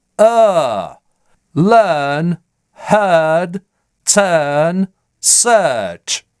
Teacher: Этот звук, хотя и записывается в английской транскрипции отдельным символом, де-факто звучит в received pronunciation идентично звуку шва, просто более напряженно и протяжно. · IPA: /ɜː/